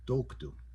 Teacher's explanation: the stress is on the O toku. That's the part of the word that you're going to say the loudest